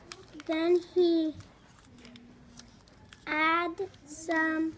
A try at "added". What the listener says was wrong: Now remember, that's got the ed at the end, so add is right, but then you have to say the sound at the end. Added.